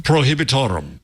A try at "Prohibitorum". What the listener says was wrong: Prohibitorum. That's very good. You did it. Just don't roll the R's.